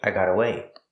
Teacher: The T in got is a fast T because it's between vowels.